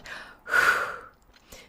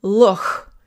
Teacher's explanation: You just don't create contact. You just let air flow between your tongue and the roof of your mouth.